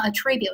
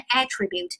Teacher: 那么重音在第一节，它就完全不搭边了，特征特性的意思